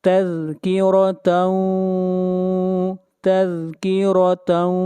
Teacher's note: یہاں پر را کو موٹا پڑھا جائے گا